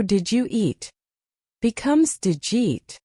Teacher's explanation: The U in did you becomes Jew.